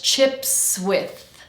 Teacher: And we finish with the th sound. So tongue between the teeth.